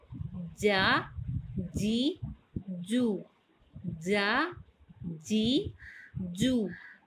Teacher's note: اس کے بعد جیم، شین اور یا یہ تینوں حروف یہ حروف شجریہ میں سے ہیں. جب زبان کا درمیان وسط زبان بالمقابل تالو کے ساتھ اوپر کو لگے تو یہ تینوں حروف ادا ہوتے ہیں